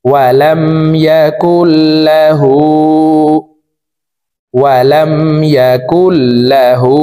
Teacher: এই হাকে ঠোঁট গোল করে এক আলিফ টেনে পড়বো